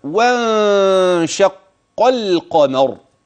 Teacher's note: واحذر معي إياك أن تدغم اللام هنا، فاللام في كلمة القمر واضحة بينة مظهرة